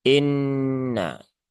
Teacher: maka nunnya ditahan dulu ya ditahan dulu tiga harakat ya jangan tergesa-gesa tunaikan gunahnya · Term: ghunah musyaddadah